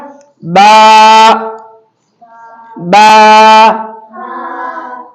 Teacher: बा दोनों होठों की तरी वाले हिस्से से अदा होता है